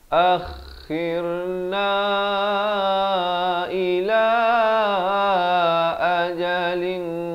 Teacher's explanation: Zalamu rabbana, 4 atau 5 harakat. Akhirna, kha di hujung kerongkong